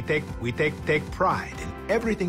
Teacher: we aspirate that sound a lot of other languages don't do that Spanish doesn't do it